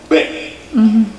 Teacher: La B se pronuncia juntando los labios con una pequeño escape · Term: B labial